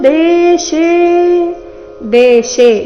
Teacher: ದೇಶೇ ಎರಡು ದೀರ್ಘ, ಶೇ ದೀರ್ಘ ಬಂದು ಅದ್ರ ಮೇಲೆ ಆಘಾತ ಬರಬೇಕು.